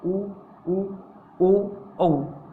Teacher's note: आपके होठों की आकृति है वो वृत्ताकार बन रही है